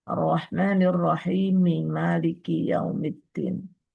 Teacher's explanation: Mim ketemu dengan mim. Berhubung mim yang pertama yang akan diidqamkan itu hidup atau berharakat maka disebut dengan idgham kabir ketika dibaca